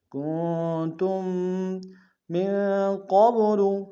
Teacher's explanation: من میں نون ساکن غنہ کریں گے، قاف کو با کے سامنے آئیں گے، پھر قلقلہ میں سے قلقلہ کریں گے۔